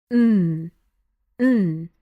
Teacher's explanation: This next one is going to help us practice nasal sounds. When we actually enunciate the letter N, you'll hear the sound or rather you'll feel the sound coming through your nose.